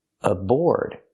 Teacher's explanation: The A is pronounced as a schwa. Aboard. Put the stress on the second syllable.